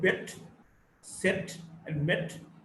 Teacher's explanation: Now we've got the sound A, the front between half closed and half open, unrounded short vowel